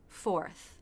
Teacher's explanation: And then we finish with the unvoiced TH, where the front part of the tongue comes just out of the teeth, not too far, and air lightly passes through.